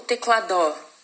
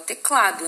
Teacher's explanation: a penúltima sílaba é a sílaba mais forte. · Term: paroxítona